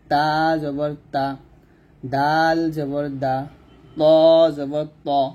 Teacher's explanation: হরফ আমরা কি করব জিহ্বাটা উপরে দুই দাঁতের গোড়ার সঙ্গে লাগবে জিহ্বার আগা সামনের উপরে দুই দাঁতের গোড়ার সঙ্গে লাগিয়ে আমরা তা দাল ত উচ্চারণ করব